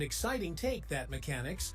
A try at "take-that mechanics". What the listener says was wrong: Oh boy, emphasis on the wrong syllable.